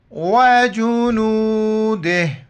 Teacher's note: جب وقف کریں گے وجنوده، صرف آخر میں ہا کا ساؤنڈ آئے گا